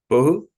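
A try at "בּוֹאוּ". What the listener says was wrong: Not bo'u, but bo'u. We need to hear a break. Bo'u.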